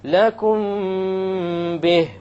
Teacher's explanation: We have a meme sakin followed by a ba. Once again, we're going to have an ikhfa, and there will be a ghunna.